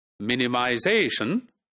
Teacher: So in this word, minimization, so ze, which is the second last syllable, that's the primarily stressed syllable. And the first syllable, men, that is where the secondary stress is put